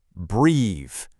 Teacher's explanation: You got to turn on that vibration at the very end. Breathe. This is a super cool example because changing that one little sound also changes the word from a noun to a verb.